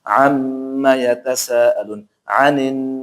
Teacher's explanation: huruf mim bertasdid dan nun bertasdid dibaca dengan cara ditekan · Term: gunah